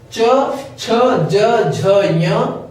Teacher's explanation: इसका उच्चारण हम तालु से करते हैं। तालु ऊपर के दांतों के ठीक ऊपर जो खुरदुरा पदार्थ हिस्सा होता है वही तालु कहलाता है।